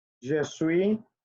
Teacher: Acuérdense que la S final no se pronuncia.